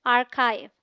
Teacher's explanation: अगर इसे आर्चीव बोल दें तो बड़ी गड़बड़ हो जाएगी, क्योंकि यहाँ भी च है ही नहीं, तो आर्चीव इनकरेक्ट प्रोनाउंसिएशन है। The AR sounds like R in car. This is the stressed syllable. The CH has a K sound. The IV sounds like IVE as in live.